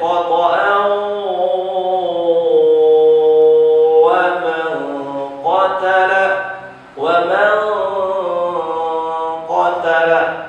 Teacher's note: Khoto'a wa, tanwin bertemu huruf waw, harus ditahan. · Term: gunnah, ikhfa